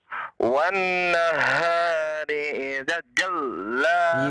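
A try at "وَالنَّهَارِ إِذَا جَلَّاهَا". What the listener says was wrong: Idza dua harokat. Idza dua harokat. Idza ada alif tidak tuh?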